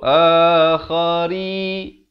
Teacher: Ri dibaca nipis 2 harakat